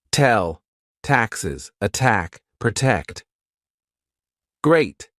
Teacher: tongue to the roof of your mouth touching the inside of your front teeth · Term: true T